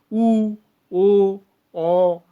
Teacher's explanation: উ, ও, অ, এগুলো কিন্তু ঠোঁটটা আমাদের দেখো তোমরা উচ্চারণের সময় তোমরা কিন্তু কিছুটা হলেও দেখবে ঠোঁটটা সরু হয়ে আসছে, অর্থাৎ সেক্ষেত্রে দুটি ওষ্ঠ কিন্তু কুঞ্চিত হয়ে যাচ্ছে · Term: কুঞ্চিত স্বর